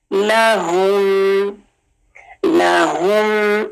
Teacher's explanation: ہا کا مخرج یہ چیسٹ سے اس کی ساؤنڈ آئے گی، یعنی گلے کا بالکل نیچے والا حصہ جو چیسٹ کی طرف ساتھ جڑا ہوا ہے، یہاں ہاتھ رکھ کے ہم، اور میم کو سکون سے.